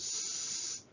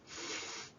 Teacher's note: we're restricting the airflow, but we're not actually stopping it